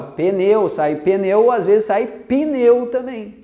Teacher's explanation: Eu tenho duas consoantes, o encontro consonantal, e entre elas, na linguagem coloquial, a gente coloca uma vogal. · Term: acréscimo de um som